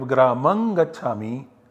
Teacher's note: And this becomes an input for 8459 to apply, and this anusvara gets substituted by the nasal parasavarna of g, which is ng